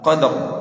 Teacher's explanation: Dan terakhir pada huruf ra, ya, qadari kita matikan, maka huruf ra-nya harus terdengar dan dibaca dengan tebal. Qadar, bukan qad.